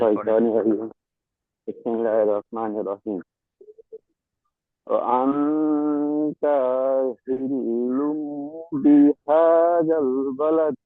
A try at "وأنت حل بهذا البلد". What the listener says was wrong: Just একটু ওয়ান তা একটু টান হয়ে গেছে, এই জায়গাটা খেয়াল রাখবেন, ঠিক আছে জি।